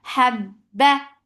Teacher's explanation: For fatha open jaws attached with ba, ba will get cut off the sound. There is no flow of sound. Habba for fatha open jaws.